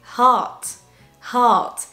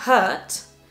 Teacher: Heart, c'est un son A mais ouvert. Open vowel.